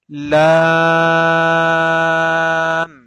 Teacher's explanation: With the tongue tip, we are touching upper hard palate, which is behind the upfront teeth.